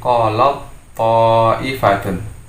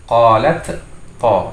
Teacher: Sama juga seperti tadi, maka fungsi hamzahnya hilang dan suara ta dimasukkan dalam huruf to